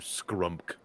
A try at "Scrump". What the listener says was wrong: I need you to enunciate the M a little bit more. Scrump.